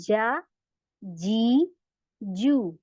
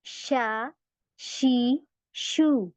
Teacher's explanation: मैंने जीम के लिए पूरा तालू को चिपकाना है शीन में नहीं चिपके · यहां पर और ज्यादा गैप आ गया है ठीक है तो जीम में हमारा पूरा तालू से चिपके सॉफ्ट से नहीं हार्ड पैलेट से सख्त तालू से चिपके का लेकिन शीन में नहीं चिपके का